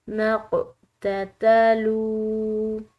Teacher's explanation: قوف حروف قلقلہ میں سے ہے، اس کو ہلا کر ادا کریں گے